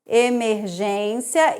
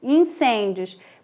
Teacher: a gente tem uma paroxítona com ditongo, ó, que vai da semivogal para vogal.